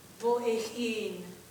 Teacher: I like to separate them a little bit with just this idea of a breath articulation, but not a glottal.